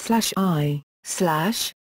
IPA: iː